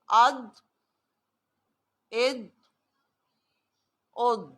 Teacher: اور اس میں زیادہ تر آسانی سے یہ تب ادا ہوتا ہے جب ہماری لیفٹ کروٹ، ایک وقت پہ دونوں طرف کی کروٹ ملنا لگنا مشکل ہوتا ہے. موسٹلی لیفٹ کروٹ جو ہے پچھلی، وہ اپنے بالمقابل اوپر کی لیفٹ داڑوں سے جب ملتی ہے تو وہاں سے ضاد ادا ہوتا ہے